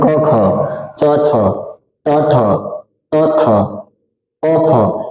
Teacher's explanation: किसी भी वर्ग के पहला दूसरा वर्ण को क्या कहते हैं, हम अघोष वर्ण कहते हैं।